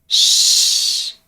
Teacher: you have to elevate your tongue a little bit just behind that alveolar ridge the tongue comes close to the palette but there's no full closure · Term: fricative